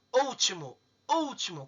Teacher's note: Eu tenho a antepenúltima sílaba tônica.